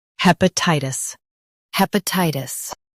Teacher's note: hep uh tie tis hepatitis hep uh tie tis hepatitis Stress tie and keep tis soft.